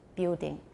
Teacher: building the l after vowels is disappearing